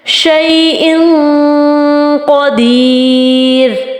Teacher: حمزہ دو زیر ان ہوتا ہے تو ان ہم نے نون کی آواز کو چھپانا ہے